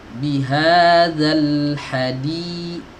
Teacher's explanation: di-nya dipanjangkan 2 harokat